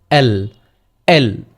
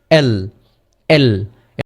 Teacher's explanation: আমাদের জিহ্বার যে আগাটা রয়েছে এটি হচ্ছে আমাদের দন্তমূলের ওই জায়গায় গিয়ে থেমে যাবে।